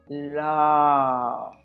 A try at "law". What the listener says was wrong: you see how you opened everything and you didn't round your lips. Great job.